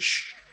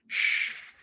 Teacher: the tip of your tongue, it's pointing downwards, and the back of your tongue is touching the roof of your mouth. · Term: palatal